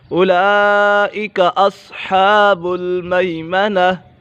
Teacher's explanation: یہاں پر مد متصل ہو رہا ہے، حرف مدہ کے بعد حمزہ اسی کلمے میں ہے